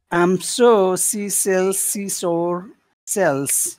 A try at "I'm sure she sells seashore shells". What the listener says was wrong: That's getting better. You're getting better at it.